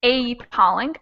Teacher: usually the vowel sound is cut out a little bit and instead of being pronounced fully it gets chopped off and it sounds like uh